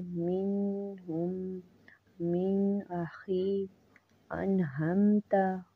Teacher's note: इजहार नून साकिन और नून तनवीन को बगैर गुना करके पढ़ना, जब नून साकिन और नून तनवीन के बाद छह हरूफ हैं, हरूफ हल्की में से कोई हर्फ भी आ जाए तो वहाँ इजहार होगा, यानी नून की आवाज़ को ज़ाहिर करके पढ़ेंगे।